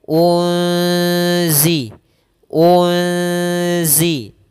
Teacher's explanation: Kemudian unzila, kembali lagi di sini ada nun sukun atau nun mati bertemu dengan huruf zai, maka kita namakan dengan bacaan ikhfa. Cara membacanya adalah nunnya disamarkan kepada huruf zai